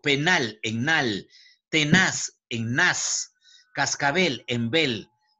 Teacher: las palabras agudas llevan la mayor fuerza de voz en la última sílaba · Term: acento prosódico